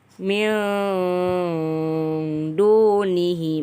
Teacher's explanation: terlihat samar atau bisa juga menjadi suara geng atau sesudah itu disambut dengan dengung sepanjang 1-1 setengah Alif atau bisa kurang lebih 2-3 harokat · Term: Ikhfa Haqiqi